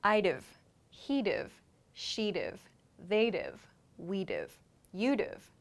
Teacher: Then this VE portion, V sound, comes from have, have. So would have becomes dv, dv in very fast speech.